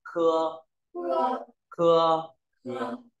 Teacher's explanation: K là dống chữ khờ nhưng mà bật nhẹ hơi